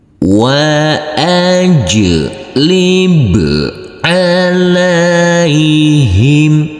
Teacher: huruf jim yang bersukun ini harus kita pantulkan karena ini adalah bacaan qalqalah